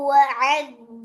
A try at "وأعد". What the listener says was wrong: وأعد الله இல்ல, அது பெரிய பல. அலிஃப் ட சவுண்ட விட்டுட்டு போறீங்க, அந்த ஏட சவுண்ட் எடுத்துக்கோங்க. وأعد وأعد சவுண்ட் முக்கியம்.